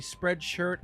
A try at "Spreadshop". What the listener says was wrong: You're saying it wrong again. It's not spread shirt. Spread shop.